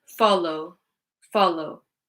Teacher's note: It doesn't actually end in a wuh. If you listen to the sound, it ends in a oh sound.